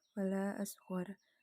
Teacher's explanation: Panjang majais munfasil yaitu antara 2-5 harokat.